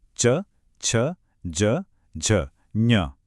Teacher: जब जीभ ऊपर तालू को छूती है तो बनती हैं ये आवाजें, च और ज